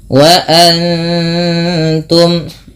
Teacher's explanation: Wa antum, nun mati bertemu ta dibaca dengan bacaan ikhfa. Cara membacanya yaitu dengan menyamarkan bunyi nunnya kepada huruf ta, yang dimana kita ketahui bahwasanya ta makhrajnya atau tempat keluar huruf ta itu berada pada ujung lidah menempel dengan antara gusi atas dan gigi seri atas ya, dia di tengah-tengah antara itu.